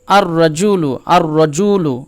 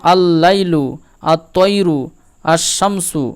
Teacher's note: লামটাকে বাদ দিয়ে আলিফের সাথে হুরুফে শামসীর ইদগাম হয়ে যায়